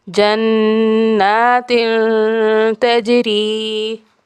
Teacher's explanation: یہاں تا کے نیچے تنوین ہے اور اس کے بعد حرف تا آ گیا ہے تو یہاں بھی نرم غنہ ہوگا۔